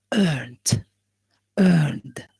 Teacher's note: N sound is a voiced sound. Okay, it involves a vibration of the vocal cords.